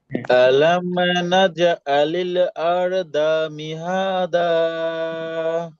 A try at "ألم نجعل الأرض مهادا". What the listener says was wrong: হ্যাঁ, সুন্দর।